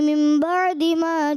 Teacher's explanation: मिम बादी पे गुन्ना नहीं हुआ, नाक में आवाज़ नहीं ले गए